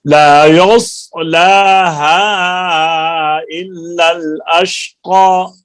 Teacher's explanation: صاد کو موٹا کریں، زبان کو اوپر کی طرف اٹھائیں، تالو کی طرف